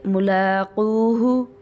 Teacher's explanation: لام کے اوپر کھڑا زبر ہے اس کو لمبا کریں گے